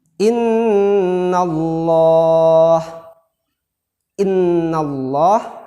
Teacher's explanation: Innallah, nanya itu berbaris fathah atau berbaris di atas, kemudian lamnya kita baca tebal mengarah kepada huruf O. Innallah, kita penuhkan rongga mulut kita dengan lafaz Allah ini.